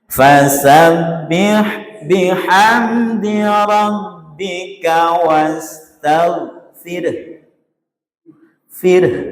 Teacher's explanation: Wah jadi fir mencucu di akhir. Itu isyarat domahnya. · Haknya berarti disukun. Ro sukun, hak sukun diakhiri mencucu. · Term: al-ishmam